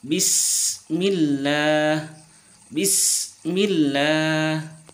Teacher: Huruf sin itu berada pada ujung lidah pada posisi 2 gigi seri bawah. Lalu suara keluar melalui celah di antara 2 gigi seri atas dan bawah, yaitu huruf shad, zai, dan sin, atau ujung lidah bertemu dengan dinding 2 gigi seri bawah.